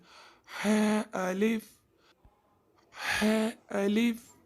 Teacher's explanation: حرف ہا جو ہے اس کو حلق کے درمیان والے حصے سے ادا کرتے ہیں